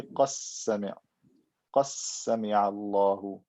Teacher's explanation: They will merge the dal into the sin.